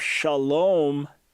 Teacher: a long a vowel in an accented syllable became O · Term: Canaanite shift